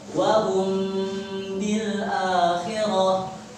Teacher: Cara bacanya adalah guna di antara izhar dan juga idgham 2 harokat. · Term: ikhfa syafawi